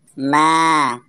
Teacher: huruf mim fathah bertemu dengan huruf alif, dibaca panjang selama 2 harokat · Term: mad tabi'i